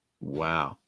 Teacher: lowering the pitch can make it sound a little bit more disappointing and negative